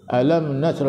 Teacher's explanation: Alam tu tak boleh dengung, izhar syafawi